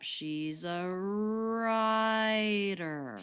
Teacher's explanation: we have smoothly going up she's a righter okay then the peak on rye and the pitch falls down